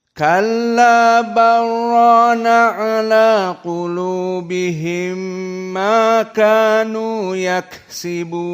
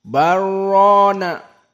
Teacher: jumhur qurra dibaca dalam keadaan idgham, lam sakinah kepada ra